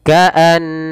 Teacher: nun bertasydid sebagaimana mim bertasydid, yaitu ada bacaan gunnah ditahan suara n ya. Ka'annahum baru dilepas.